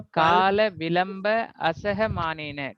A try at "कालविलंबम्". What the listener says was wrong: अरे विलंब नहीं, विलंबम बोलिए। काल विलंबम असह मानेन, इस तरह पढ़ेंगे अपन लोग जब बोलेंगे।